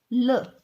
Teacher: सातवें नंबर पर है आपके पार्श्विक, यानी कि पार्श्विक का अर्थ होता है बगल का। इसमें जो प्राण वायु होती है वो जीभ के दोनों तरफ से निकल जाती है